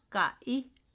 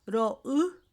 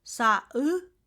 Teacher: Pusó es consonante glotal, va únicamente entre vocales. De ninguna manera pusó puede ir entre vocal y consonante, siempre entre vocales, es intervocálico.